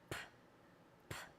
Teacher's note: To make this sound, your lips close, and then they burst open. P, p. And your vocal folds aren't turned on.